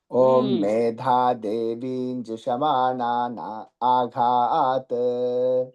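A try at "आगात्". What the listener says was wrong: ఆగాతు ఘాలవుతు లేదు, ఆగాతు.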